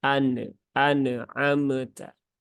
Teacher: masih banyak yang memantulkan huruf nun dikata an'amta menjadi an anamta bahkan tidak hanya Nun tetapi juga mim Nah